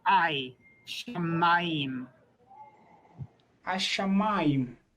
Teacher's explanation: it's the ah plus a little bit of a y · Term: diphthong